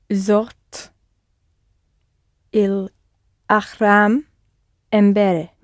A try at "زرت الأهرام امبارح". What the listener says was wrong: There's no ch. It's not like achu though. It's just a h sound. Ahram. Ahram.